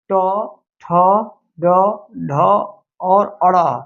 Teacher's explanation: ट वर्ग का उच्चारण स्थान जो है मूर्धन्य होता है